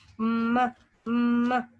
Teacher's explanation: The mouth passage is completely close by the lips. Lips जो है दोनों lips मिलके रास्ता बंद कर देते हैं मुकम्मल तौर पर. The soft palate is lower to allow the air escape through the nose. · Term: बाय लेबियल